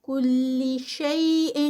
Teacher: اخفا جو ہے وہ آگے قاف ہے تو ہیوی والا اخفا ہے